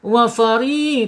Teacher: Wafari tipis ya tapi rnya enggak boleh bergetar ya. Getarannya dua saja.